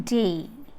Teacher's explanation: When you articulate day, lips are unrounded. The diphthong is described as a glide from a front unrounded vowel between half close and half open, half close and half open, to front unrounded vowel between close and half close.